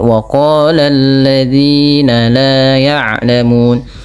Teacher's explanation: Pada lafal waqala di sini lafal huruf qaf dipanjangkan sepanjang 2 harakat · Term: mad tabi'i